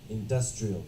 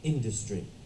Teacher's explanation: So if it's the adjective, the stress is on the D. Industrial.